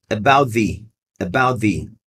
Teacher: quando você tem esse som de T, de about, mas esse som de TH mais forte, esse T cai.